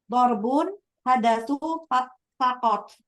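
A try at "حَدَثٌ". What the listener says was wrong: Hadasun tanwin.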